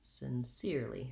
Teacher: sincerely has 3 syllables and the middle syllable is stressed